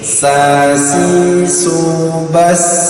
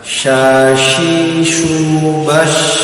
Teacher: Jadi kalau sin dari ujung lidah. Kalau yang shin tebal dari tengah lidah.